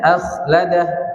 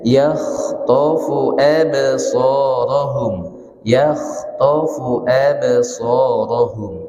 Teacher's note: kalau kha itu agak ngorok sedikit. Kha ya, kasar dia nafasnya tuh. Nah, tapi jangan terlalu digarukkan. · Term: huruf kha